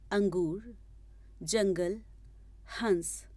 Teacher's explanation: उपयुक्त शब्दों का उच्चारण करते समय आपने देखा कि ध्वनि नाक से उत्पन्न हो रही है। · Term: अनुस्वार